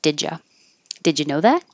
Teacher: the D and the Y make a j and the U changing to uh so did you sounds like did you did you know that